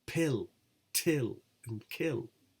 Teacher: The release phase of p, t, k is explosive.